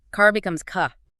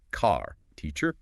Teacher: In many standard British accents, the R at the end of a word like car or teacher is often dropped or pronounced very softly. It's called non-rhotic.